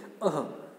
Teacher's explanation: अह के इसको हम विसर्गों की तरह बोलते हैं, ह की साउंड के साथ